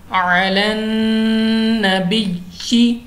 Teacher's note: नून मुशद्दद है गुन्ना करके पढ़ा है